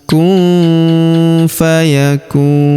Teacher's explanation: Perhatikan huruf nun sukun bertemu huruf fa, maka nun sukunnya melebur ke huruf fa. Kita baca dengung dan samar. Dengungnya kita tahan 2-3 harokat.